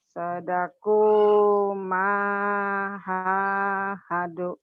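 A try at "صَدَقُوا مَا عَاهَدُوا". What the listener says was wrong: Nganya ketinggalan. Sadaku ma'ahadu. Sadaku ma'ahadu.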